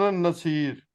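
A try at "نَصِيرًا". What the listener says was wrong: ये नसीर नहीं है, नसीर आ पढ़ेंगे। रा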